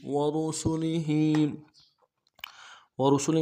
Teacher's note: ورسله میں را کو موٹا کریں گے، باقی حروف کو نرم سے ادا کریں گے، ہا کے نیچے کھڑی زیر ہے، ایک الف دال میں کھینچیں گے.